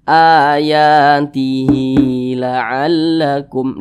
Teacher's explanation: dengan al-qur'an terbitan Indonesia maka hanya ini dibaca panjang ayatihi laallakum dipanjangkan dua harakat atau kira-kira dua ketukan namanya adalah madsilah qasirah